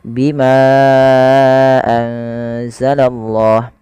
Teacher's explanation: Ya, di sini adanya ma yang bertemu dengan hamzah setelahnya dan hamzah tersebut pada lain kata, maka kita namakan dengan mad jaiz munfasil. Untuk mad jaiz munfasil sendiri panjangnya adalah 4 harakat atau 5 harakat.